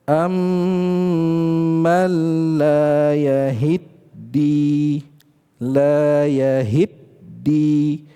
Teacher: Jadi ada proses idgham pada huruf ta dengan huruf dal